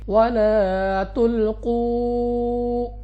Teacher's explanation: قاف مستعلیہ میں سے ہے، موٹا پڑھیں گے منہ اور آواز کو کھول کر، اور اس کے بعد واو مدہ، کیونکہ واو ساکن سے پہلے پیش، 2 سیکنڈ تک کھینچ کر پڑھیں گے وَلَا تُلْقُوا۔